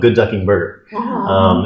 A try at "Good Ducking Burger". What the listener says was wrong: you're saying it wrong. The emphasis is on ducking.